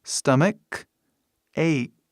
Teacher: Faz som de K as duas vezes.